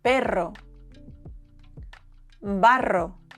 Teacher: It's not in your throat. It's not a lion's roar. It's a vibration, a trill.